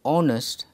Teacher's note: the word honest begins with the vowel sound because the sound of the letter h is silent therefore it is pronounced honest and ann is used he is